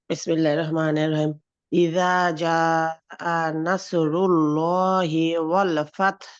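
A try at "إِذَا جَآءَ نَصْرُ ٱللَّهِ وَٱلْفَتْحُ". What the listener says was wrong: good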